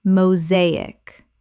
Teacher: Three syllables with the stress on the second.